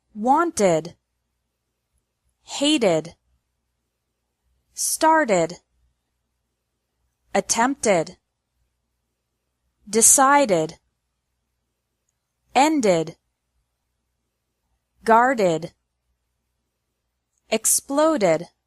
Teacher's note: Ed is pronounced like ed with an extra syllable after verbs ending in a T or a D sound.